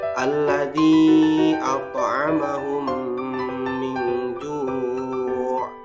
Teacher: Pada contoh ini yaitu mim mati atau mim sukun bertemu huruf mim. Jadi didengungkan 2 harokat. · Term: idgham mutamatsilain